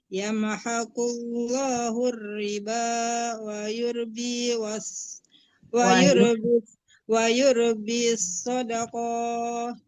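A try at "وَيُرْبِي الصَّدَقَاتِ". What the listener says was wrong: Sodakat ta yang dimatikan ya. Jangan sodakah, bukan tamaruta itu tak biasa tasdid.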